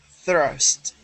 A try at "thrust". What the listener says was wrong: Okay, I heard it tap.